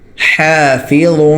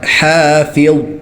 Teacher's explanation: ضا موٹا ہوگا، اور ضا نکالنے کا طریقہ زبان نکال کے زبان دانتوں کے درمیان دیں، زبان کی نوک، ٹھیک ہے، اور نرمی کے ساتھ نکالیں اور موٹا نکالیں. غادو پیش ضوں، حافظ.